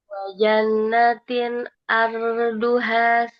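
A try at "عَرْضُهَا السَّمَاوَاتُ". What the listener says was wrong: Enggak panjang. H-nya tidak boleh panjang. Wajannatin arduhas samawat. Walaupun dia fathah ketemu alif, di depannya ada alif lam. Jadi langsung melebur ke huruf sinnya. Enggak boleh kita panjangkan H-nya.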